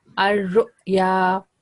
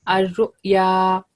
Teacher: So we don't give hard or a jerk, but just a soft jerk due to Hamza has sukoon.